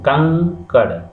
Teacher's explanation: लेकिन अनुस्वार में हवा जो है नाक से ही निकलती है और इसको हम थोड़ा खींच के बोलते हैं